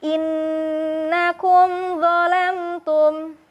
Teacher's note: Huruf mim yang bertemu dengan huruf zo tidak diayunkan, tidak ditahan, sehingga yang terdengar adalah huruf mimnya lebih mengalir.